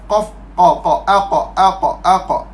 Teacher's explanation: huruf qaf dia duduk di kawasan yang awal lidah. Bawah sikit kerengkung. Awal lidah ni adalah huruf qaf.